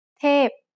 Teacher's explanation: tape is a falling tone